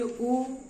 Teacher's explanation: तो जब छोटा ऊ और बड़ा ऊ को बोलेंगे, तो जब बोलेंगे ऊ, यानी यहाँ पे बोले तो यहाँ प्रेशर पीछे की तरफ पड़ता है, इससे पता चलता है कि जो हमारे छोटा ऊ और बड़ा ऊ है ये हमारे पश्च स्वर है, क्योंकि इनको बोलने पे यहाँ पे दर्द होता है हल्का सा।